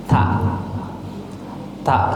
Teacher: antara gigi dan gusi nih lidah Anda lidah kamu nih lidah ujung lidahnya ya ditempelkan ke pertemuan antara gigi dan gusi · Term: huruf ta